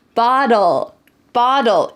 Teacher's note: In American English the T changes to a D sound.